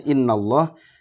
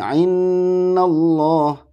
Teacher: ini adalah huruf hamzah ya pangkal tenggorokan · Paling pangkal. Kesalahan seringkali dikeluarkan dari tengah tenggorokan sehingga dekat dengan pengucapan huruf ain. Nah, hati-hati mengucapkan hamzah seperti mengucapkan ain.